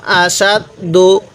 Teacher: এ হামজা এর মধ্যে আবার টান দিব না